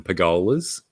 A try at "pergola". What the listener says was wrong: Pergolas? Where'd the R go? There's an R in there. Pergola.